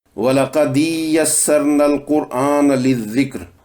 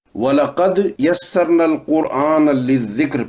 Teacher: سورہ قمر کی آیت وَلَقَدْ يَسَّرْنَا الْقُرْآنَ لِلذِّكْرِ فَهَلْ مِن مُدَّكِرٍ، اس آیت میں دال پر قلقلہ ختم ہونے سے پہلے اگر یا پڑھنا شروع کر دیا جائے تو ایسا معلوم پڑتا ہے کہ دال کے نیچے زیر ہے